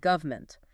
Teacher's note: A fast speaker might reduce it to two or three syllables